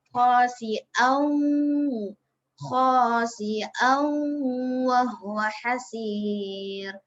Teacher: Kita kena masukkan huruf tanwin tu ke dalam huruf waw. Lepas tu kita sertakan dengan bunyi dengung 2 harokat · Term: idgham bi gunnah